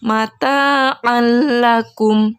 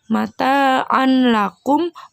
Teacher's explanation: tanwinnya disini sudah lebur ke huruf lam atau sudah masuk ke huruf lam jadi cara bacanya mata alaikum Jadi bukan mata on lakum bukan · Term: idgham bilagunnah